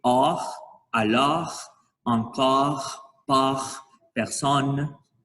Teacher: C'est un son entre le O et le A.